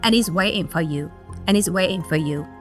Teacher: Waiting. The A sound changes into I, and the NG sound at the end is reduced to the N sound. We also have the drop of the sound T in the middle, so it sounds like, and he's waiting for you, and he's waiting for you.